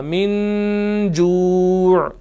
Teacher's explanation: یہاں پر نون ساکن ہے، اور نون ساکن کے بعد جیم ہے، حروف حلقی میں سے یہ نہیں ہے، لہٰذا یہاں پر غنہ ہوگا